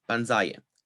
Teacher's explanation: we get stress on the penultimate syllable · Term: penultimate stress